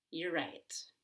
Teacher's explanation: I can just say you're right. And I'm making an ER sound by pulling my tongue back.